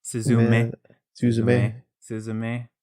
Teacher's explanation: put the accent on the last syllable